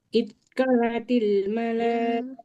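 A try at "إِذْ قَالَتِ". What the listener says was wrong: Iz qala. Lamnya fathah ketemu alif. Berarti panjang. Iz qalatil. Iz. Bukan it, bukan it, tapi iz.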